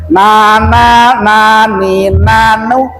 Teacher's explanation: Jadi nun tuh kemarin dari mana makhrajnya, nun itu makhrajnya dari ujung lidah dengan langit-langit yang, yang atas, sama dengan huruf n